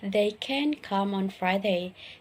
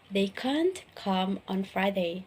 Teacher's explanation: because both the model can't and the verb come are stressed when we use the positive form of can we quickly glide over the can and it is hardly pronounced